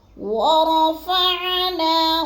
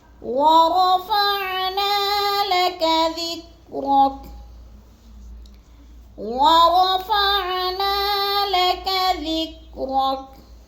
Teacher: الذی انقض ظہرک، الذی انقض ظہرک، ورفعنا، را کو پر کر کے پڑھنا ہے اور نا کو بھی تھوڑا سا ہم نے لمبا کرنا ہے